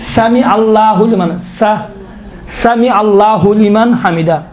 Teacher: اسی سا کو تھوڑا موٹا ادا کرے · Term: صاد